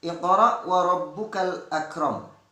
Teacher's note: Iqra masih tetap pada hukum bacaan qalqalah sughra yang pantulannya kecil.